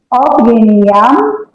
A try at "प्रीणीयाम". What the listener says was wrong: अ नहीं आएगा।